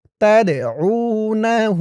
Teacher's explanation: এই দালটা কলকলার হরফ ধাক্কা দিয়ে পড়তে হবে